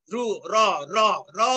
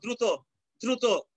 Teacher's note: উচ্চারণ করলে দেখবে যে জিহ্বার অগ্রভাগ অনেকবার কম্পিত হচ্ছে, র খুব দ্রুত কম্পিত হয়।